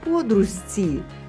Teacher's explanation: ж максимально наблизився до ци. Маємо з м'який. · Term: Компроміс